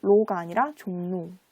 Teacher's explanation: 리을 오가 아니라 니은 오로 발음이 돼요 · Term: 비음화